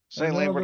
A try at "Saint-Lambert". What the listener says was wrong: Yeah, Saint Lambert, but it's probably Saint Lambert. There's no T in there. It's put there, but it's not spelled like Saint.